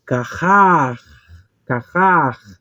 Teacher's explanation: Nós iríamos pronunciar como um R, né? Carrar, carrar, aquele som rasgando.